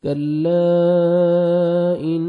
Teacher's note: نون مشدد ہے، غنہ کریں گے، نوز میں ساؤنڈ لے کے جائیں گے. کاف کو باریک پڑھنا ہے، تا کو بھی باریک پڑھنا ہے، اور 1 سیکنڈ تا کو آپ نے کھینچنا ہے.